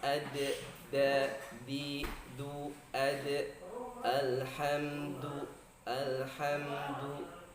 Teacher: Huruf dal keluar dari tarful lisan, dari ujung lidah bertemu dengan pangkal ujung gigi seri atas.